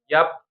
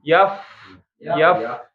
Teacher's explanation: yang fa jadi dialirkan, jangan malah nggak keluar udaranya ya. Ya pakainya satu bibir saja, bibir yang bawah ya. · Jadi ujung gigi seri kita bertemu dengan perut bibir. Nah, perut bibir itu bibir yang basah, bagian basah.